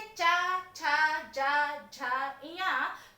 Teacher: उच्चारण करते समय आपकी जिह्वा हल्की सी तालु को स्पर्श करती है। जब वर्ण का उच्चारण करते समय तालु स्पर्श करे तो वो कहलाता है तालव्य।